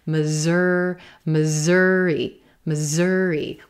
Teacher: with a z, those S's becoming a z, z, z, z sound.